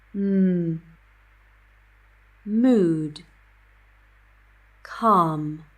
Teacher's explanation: air is released through the nose. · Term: nasal